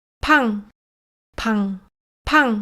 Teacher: na versão aspirada a vogal que segue é pronunciada com tom alto